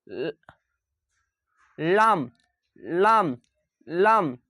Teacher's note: দাঁতের সঙ্গে কিন্তু লাগিয়ে হবে লাম